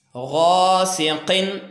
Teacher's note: गैन ज़बर अलिफ गा, ये अलिफ मद्दा है और इसको एक अलिफ के बराबर खींचेंगे